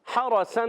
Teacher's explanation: حرسن میں ہا کی ادائیگی کلیئر، حلق کے درمیان والے حصے سے، ہا پر زبر، را پر زبر، را پر زبر آنے کی وجہ سے را پر ہو جائے گا، اور سین پر 2 زبر کی تنوین ہے، تنوین کے بعد آ گئے شین، اور اس لیے نون سائن تنوین کے بعد حرف اخفا میں سے شین ہے تو اخفا کریں گے، ایک الف کا غنہ کریں گے۔